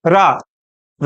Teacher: रा आप जब बोलोगे तो जीवान ऊपर जाएगी, ऐसे बेलन सरी गोल घूमेगी और फिर नीचे आएगी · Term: लुंठित